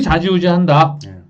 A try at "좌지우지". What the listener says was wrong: 발음을 잘 하셔야 돼요. 좌지우지예요. 자지우지가 아니고.